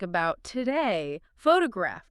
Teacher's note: The schwa sound, that weak, quick uh sound is everywhere in American English.